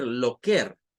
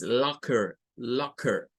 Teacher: Nuevamente, palabra terminada en ER, donde la ER suena a schwa y vean que aquí nos vuelve a aparecer ese sonido de AO, de una A con O mezclada